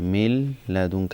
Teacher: After Nun Sakin came the letter Lam. It's idgham without gunna, because if there's a ra and lam after a nun, then it will be not pronounced with gunna.